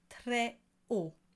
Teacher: très haut is not connected, because that H is a glottal H. Très haut, never très haut.